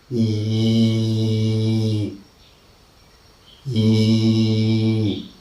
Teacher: Now we are discussing cardinal vowel number 2. Okay, cardinal vowel number 2 is again uttered with the front of the tongue, but not very close. It is half closed position, unrounded